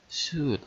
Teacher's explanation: we also do not pronounce the L sound in the word should